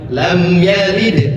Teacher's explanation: Mim sukun bertemu dengan ya. Cara membacanya izhar tidak ditahan.